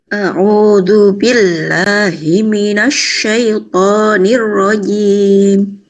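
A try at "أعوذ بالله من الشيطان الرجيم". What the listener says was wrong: A'udzu bin zu-nya miring. Yang lain benar.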